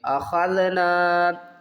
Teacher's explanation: خا کو حلق کے اوپر والے حصے سے ادا کریں گے اور خا کو ذال کے ساتھ پڑھیں گے۔